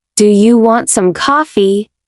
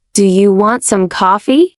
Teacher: Now try again, but this time lift your voice slightly at the end · say it with a flat tone. No rise, no fall. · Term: simple rise